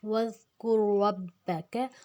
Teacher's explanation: کاف کو ہم نے پتلا رکھنا ہے، یہ پتلے والا کاف ہے، را کو ہم نے موٹا رکھنا ہے۔ وَاذْكُرْ رَبَّكَ وَاذْكُرْ رَبَّكَ، با کو ہم نے موٹا نہیں رکھنا، را کو موٹا رکھنا ہے۔ · کاف کا پیش ڈائریکٹ یہ شد والے را کے ساتھ مل جائے گا۔ وَاذْكُرْ رَبَّكَ، ربک، کاف کو ہم نے پتلا رکھنا ہے، یہ پتلے والا کاف ہے، را کو ہم نے موٹا رکھنا ہے۔